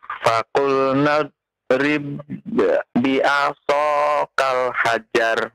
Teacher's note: Huruf baknya tidak ada qalqalah ya. Karena huruf ba yang pertama masuk kepada ba yang kedua dan dia bertasydid ya.